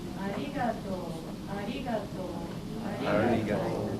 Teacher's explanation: So when we say arigato, the pitch matters. You go up and down and stay low. Go low, high, low, low, low. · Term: pitch accent